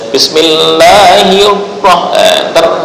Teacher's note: sifat asli takrir hilang, tetap bergetar sekali doang. Bismillahirrahman, bukan hirrah, itu kan berkali-kali.